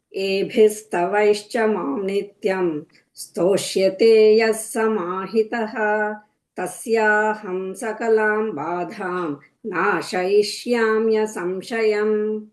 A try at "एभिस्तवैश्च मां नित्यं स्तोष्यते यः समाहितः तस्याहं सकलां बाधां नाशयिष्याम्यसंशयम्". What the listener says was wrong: Went to Bhagavad Gita tune.